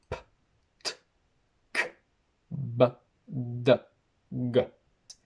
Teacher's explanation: We have plosives, or stops, where there's a complete obstruction of air between articulators.